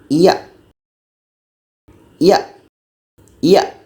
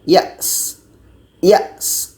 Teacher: Hamzah ini memang suara kita akan tertahan sejenak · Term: syiddah